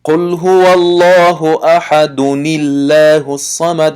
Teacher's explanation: بنابراین وقتی ما قل هو الله احد الله الصمد میگذاریم، الله الصمد که میگیم حرف لام لفظ الله تنک میشود